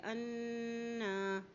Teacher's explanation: لیے اس کو ایک حرکت لمبا بھی ادا کریں گے اور نون کے پر شد ہونے کی وجہ سے یہاں پر غنہ بھی ادا کریں گے